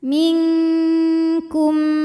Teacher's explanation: Sebab ada nun sukun menghadapi huruf kaf. Cara baca nun sukunnya adalah samar-samar, siap-siap menuju makhraj huruf kaf, pangkal lidah disertai dengung. Dengungnya ini juga besar ya. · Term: ikhfa ab'ad